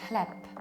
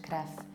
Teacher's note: in Polish, people don't voice the endings. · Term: devoicing